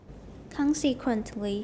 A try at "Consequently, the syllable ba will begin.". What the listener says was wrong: Not good. Well, anytime we pause, we're going to have a continuation rise, even if it's an example word.